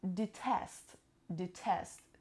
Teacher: It has two syllables and the stress is on the second syllable.